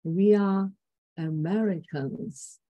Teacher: Here, mid fall level tone. We are mid-fall level and Americans fall level.